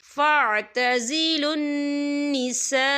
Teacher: نساء خالی الف سے پہلے زبر ہے اور اس میں مد بھی ہے، تو ہم اسے 4 حرکت کے برابر کھینچ کے پڑھیں گے